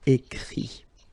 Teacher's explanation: even if you've got this final T, you don't pronounce it, so it goes like écrit, okay.